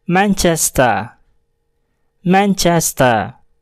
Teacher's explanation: Huruf R pada kata tersebut tidak dibunyikan dikarenakan terletak di akhir kata dan hanya akan terdengar T.